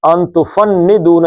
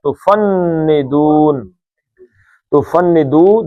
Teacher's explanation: یہ نون پہ شد ہے، اس کو نون کو جو کھینچنا ہے یہ زبان تالو سے لگا کے کھینچنا ہے. تفندون، تفندو 2 حرکتیں تھیں، یہ عارضی طور پہ ساکن ہوا تو 5 حرکتیں.